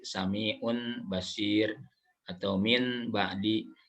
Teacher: dirubah bunyi nun mati atau tanwin menjadi huruf atau bunyi mim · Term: iklab